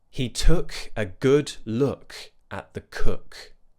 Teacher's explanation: we want it to be a relaxed uh sound. Uh, so we're rounding, but in a really lazy way.